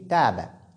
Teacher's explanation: C'est comme quand je dis Taba. Taba avec Ta, qui est lu de façon très légère. On ne dit pas Ta, on dit Taba.